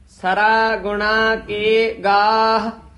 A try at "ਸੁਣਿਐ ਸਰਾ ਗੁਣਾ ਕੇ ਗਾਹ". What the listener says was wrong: ਗੁਣਾ ਕੇ ਇਕੱਠਾ ਨਹੀਂ ਬੋਲਣਾ, ਸਰਾ ਗੁਣਾ ਕੇ ਗਾਹ।